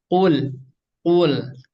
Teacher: Kurang lebih seperti huruf ki ya, huruf ki di Indonesia ya. Dan huruf qaf ini tempat keluarnya ada pada pangkal lidah atau ini lidah kita, lidah yang bagian belakang. Nempel ke yang atasnya, mudahnya seperti itu ya.